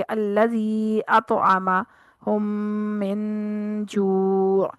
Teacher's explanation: हरूफ मद्दा के बाद हमजा अगले कलमे में आ रहा है ना, तो इस सूरत में इसको मद्दे जायज कहेंगे। खींचना, इसको मद करना 2 अलिफ के बराबर ही है, यानी 4 हरकत, लेकिन इसका नाम चेंज है क्योंकि ये हमजा जो है ये दूसरे कलमा यानी दूसरे लफ्ज में आ रहा है।